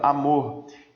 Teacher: Sílaba mais forte de amor, mo. Aqui, ó, oxítona.